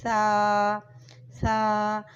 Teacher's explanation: سا کو باریک اور نرمی کے ساتھ پڑھا جاتا ہے